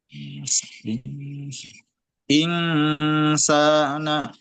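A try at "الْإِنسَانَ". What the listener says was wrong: Masih eng itu ya kan? Ing Kalau itu nun sukun ya, itu idhar nanti jadinya. Jadi nunnya samar sambil siap-siap ke sin. I, ya. Insana. bukan insana, bukan insana. Kan beda ya, tiga suara ini.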